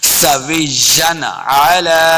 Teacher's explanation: دو زبر کی تنوین کے بعد عین حروف خلقی سے ہے تو بغیر غنہ کے پڑھنا ہے غنہ نہیں کریں گے.